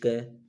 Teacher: क है जो कंठे से निकलती है, क, तो कंठ से इसकी ध्वनि निकलती है।